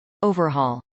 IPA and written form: ˈoʊvɚˌhɔːl (overhaul)